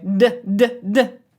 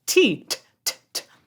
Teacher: So, the d isn't even voiced. A d, by the way, d d d voiced consonant. Voiced consonant. T t t not voiced. The difference is if there's a pitch underneath. · T t t not voiced. The difference is if there's a pitch underneath. D means that I have my vocal folds vibrating and creating a pitch. There's a an oscillation there.